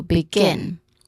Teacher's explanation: the stressed syllable of this word is gin, which is the second syllable